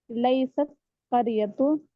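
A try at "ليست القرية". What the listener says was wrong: मिला करके बोल, लई सतिल करियतु, मिला करके। लई से शुरू में आएगा, ये बीच में नहीं आता जैसे तुम लगा रहे थे ना। यहाँ पे आएगा।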